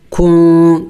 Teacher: اخفا یعنی ناک میں آواز چھپانا، نون کو ظاہر کر کے نہیں پڑھیں گے